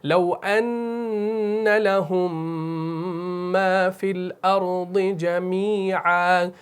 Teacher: جب میم ساکن کے بعد میم آ جائے، چاہے پھر وہ شد والی آئے یا کسی پرنٹ میں شد کے بغیر آ جائے، تو دونوں صورتوں میں آپ نے وہاں پر ادغام کرنا ہے غنہ کے ساتھ اور کھینچ کر پڑھنا ہے